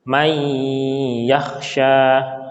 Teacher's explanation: Kalau di Madinah tidak ada sukunnya, tetapi harus kita sadari ini masuk ke dalam, namanya idgham. Idgham bigunnah, kita tahan 2 harokat.